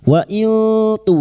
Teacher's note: Kita samarkan nun sukun dan mendengung selama tiga harakat. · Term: Ikfa hakiki